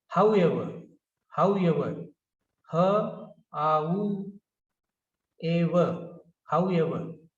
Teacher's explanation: So I told you earlier that the ending r is not pronounced